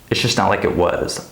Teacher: So the it is unstressed and it's linked to the K before it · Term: linking